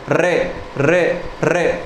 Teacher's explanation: हमारी जीभ ऊपर लगेगी मूर्धा पर, और लगकर ऐसा लगेगा झटका सा उसमें लगता है, 2 3 4 5 बार वो ऊपर ही ऊपर टच हो जाएगी आपकी। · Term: प्रकंपित